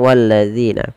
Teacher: Dan pada lafaz zi di sini ada bacaan berupa mad tabi'i, kasrah bertemu ya. Panjangkan zi sepanjang 2 harakat.